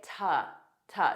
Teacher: a very unstressed ta, but connect it to your next sound